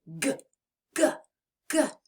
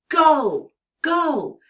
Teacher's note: You can feel the vibration in your throat as you release the sound. This is a sound that I think sometimes is easier to say as a word. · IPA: /g/